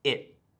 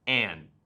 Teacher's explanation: my teeth touch my tongue, but I don't make the sound after.